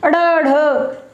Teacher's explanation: इनको बोलते ही अड़, जीभ ऊपर जाएगी, झटके से नीचे आ जाएगी, समझ गए। उत्क्षिप्त का मतलब होता है कि फेंकना, जीभ ऊपर गई और झटके से नीचे आ गई। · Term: उत्क्षिप्त ध्वनियां